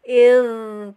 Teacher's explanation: Makhrajul hurufnya adalah ujung lidah kena ujung gigi seri ya, seri bagian atas ya. Sifatnya rohwah, mengalir, jangan ditekan atau dipantulkan, kita alirkan saja.